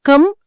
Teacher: పెదవులు మూసుకొని ముక్కు ద్వారా ఆ నాసికా ధ్వనిని పలకడానికి ఒక మైక్రో సెకండ్ అధనంగా కావాలి